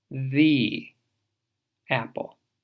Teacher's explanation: Pero enfrente de una vocal puedes escuchar la E larga que tiene rima con free.